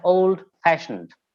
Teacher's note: so the stress will be on fashion